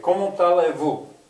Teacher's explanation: that T, you hear it, that's because the next word starts with a vowel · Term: elision